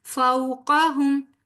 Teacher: قاف حروف مستعلیہ میں سے ہے، پر پڑھا جائے گا